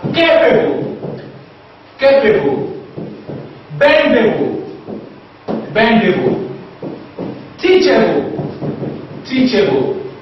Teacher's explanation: we stress the third from the last syllable.